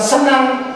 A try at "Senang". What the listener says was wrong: Loyo sekali yang gitu tuh.